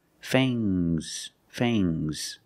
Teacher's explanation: Use a long A plus the nasal sound, mm, and a soft G.